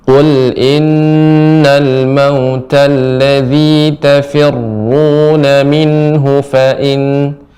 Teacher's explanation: Hu-nya pendek Ibu. Nah, di sini minhu pendek, tidak panjang, jadi harus cepat dibacanya.